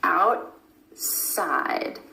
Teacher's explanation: The tongue stays up for the T and goes straight into the S sound. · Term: held T